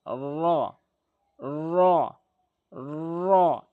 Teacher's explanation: পুর করে মুখটা গোলাকার করে জিহ্বার আগার উল্টো পিঠ উপরের তালুর সঙ্গে লাগাবেন।